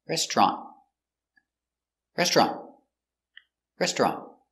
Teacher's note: this is a stop T, so you don't say restaurant, t, but you put the tongue and you stop the air, restaurant, restaurant, restaurant.